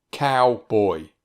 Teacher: Here's a 2-syllable word, cowboy. Actually, this word has a diphthong in each syllable. Ow is a diphthong and oi is a diphthong.